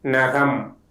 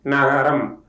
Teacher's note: The letter is called a dental nasal. To pronounce the letter, the tip of the tongue touches behind the upper teeth, and the airflow comes out through the nasal cavity.